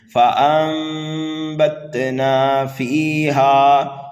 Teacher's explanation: فانبتنا فیہا. فا کو یا مدہ کی وجہ سے کھینچ کر کے پڑھنا ہے ایک الف کے برابر، اور ہا کو الف مدہ کی وجہ سے ایک الف کے برابر کھینچ کر کے پڑھنا ہے.